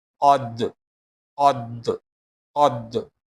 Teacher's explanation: Dal is qalqala letter. Here the sound will bounce.